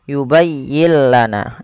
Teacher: suara nunnya kita hilangkan dan kita masukkan langsung kepada huruf lamnya sehingga yubayyill dan lam di sini dituliskan dengan tanda tasdid karena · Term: Idgham bila ghunah